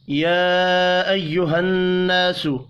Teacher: یا کے اوپر چھوٹی مد ہے، 3 الف کے برابر کھینچ کر پڑھیں گے۔ · نون مشدد پر غنہ کرنا ہے، الف مدہ کو 1 الف کے برابر کھینچ کر پڑھیں گے۔